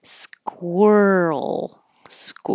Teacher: make sure you round your lips as you're making your K